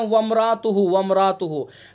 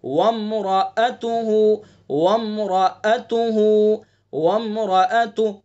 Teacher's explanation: را کے بعد جو حمزہ ہے اس کو ظاہر کر کے صاف پڑھیں گے.